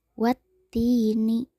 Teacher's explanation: Kata ti dipanjangkan 2 harokat. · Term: mad tobi'i